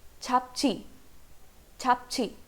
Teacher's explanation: the sound of j sounds more like ch